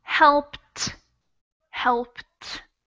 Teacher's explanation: you very much so in that sentence it's helped helped and we pronounce that e d as if it were a t